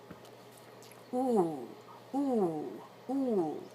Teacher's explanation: now I'm gliding up and then I'm bringing it down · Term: a little bit of a Glide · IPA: /uʷ/